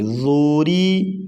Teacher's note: ضاد پیش ذو، را زیر ری ذوری، را کے نیچے زیر تو را کو باریک پڑھیں گے